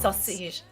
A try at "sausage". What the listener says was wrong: No, sausage. With the accent at the end.